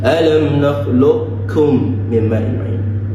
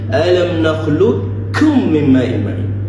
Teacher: the qaf is being switched to kaf, a complete switch without leaving any sound nor characteristic to it. So we omit the sound of the qaf and we omit every characteristic to it.